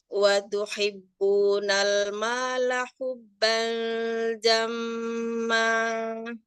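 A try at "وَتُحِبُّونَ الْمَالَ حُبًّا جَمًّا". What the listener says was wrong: jangan turun. Dia tetap datar. Hubban jamma.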